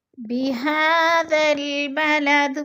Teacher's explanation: کھڑی زبر کو بھی ہم نے حروف مدہ جتنا لمبا کرنا ہے، یعنی 1 الف 2 حرکات کے برابر